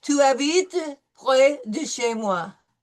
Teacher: No S. We don't pronounce the S.